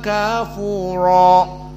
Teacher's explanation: Dan kafura roknya mufakhamah di sini.